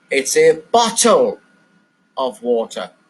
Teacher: I've put the stress on the word bottle because to make everyone know this, the water is in a bottle. So the important word in this sentence I've stressed is the word bottle.